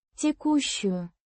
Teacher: river is feminine, pronounced roughly as Тye-KOO-shchuyu. with a soft shch. sound similar to the she in ship, but with a slightly more palatalized ch sound. The stress is on the second syllable.